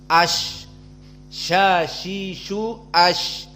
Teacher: Lihat di saat menyebut ash, pertengahan lisan kita naik kepada al-hanak al-a'la, dinding yang atas. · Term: wastul lisan